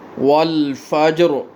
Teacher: بسم اللہ الرحمن، دونوں را پر پڑھنے ہیں، دونوں ہا پڑھنے ہیں اور ہا کو بھاری آواز کے ساتھ ادا کرنا ہے۔ والفجر، اگر وقف کرنا ہے تو را کو پر پڑھنا ہے، موٹا کر کے پڑھنا ہے۔ اگر وقف نہیں کرنا تو را کی زیر پڑھتے ہوئے را بریک پڑھیں گے۔